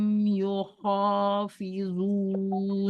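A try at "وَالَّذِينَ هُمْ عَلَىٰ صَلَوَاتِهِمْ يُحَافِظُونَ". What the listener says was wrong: Yuha, bukan yuho, yuha.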